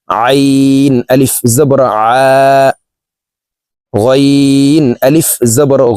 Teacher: আইন হরফকে হলকের মধ্যখান থেকে চাপ দিয়ে উচ্চারণ করব।